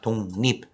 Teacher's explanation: 리을 앞에 기역이 와 있습니다. 그 기역은 이응으로 바뀌죠. 그래서 독립, 리을은 또 니은으로 바뀐다고 했으니까 이렇게 바뀌게 되는 것이죠. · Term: 비음화